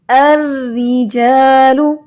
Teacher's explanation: زبان کو نیچے رکھتے ہوئے اور باریک ہونٹوں کو پھیلاتے ہوئے ہم را کو باریک پڑھیں گے